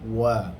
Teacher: Manakala waw, dia hanya perlu membuat gerakan mulut, yakni dalam keadaan ismam, bulatkan mulut baru sebut wa